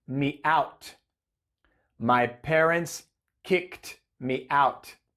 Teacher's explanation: en este caso el verbo Kick termina con k que es una consonante sorda y por eso Ed suena como t